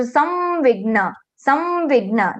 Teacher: at the place of anuswara we will be getting anunasik va